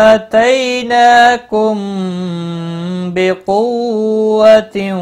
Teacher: میم ساکن کے بعد با آیا ہے، اخفاء شفوی ہوگا